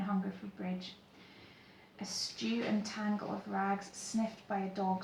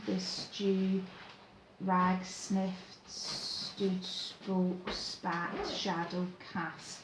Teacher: Really, really heavy on its sibilant sounds there. And the sheer number of sibilant sounds create the sense of almost a kind of spitting, like a kind of distaste for what he's seen.